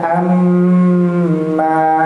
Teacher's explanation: Mimnya tadi sempat ditahan 2 harokat. Kemudian ketika mimnya berfathah juga dipanjangkan 2 harokat, maka bacanya amma, bukan amma, ya, panjangnya 2 harokat.